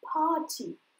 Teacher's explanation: «a» в середине слова, поэтому я ее просто удлиню, у меня получится «party».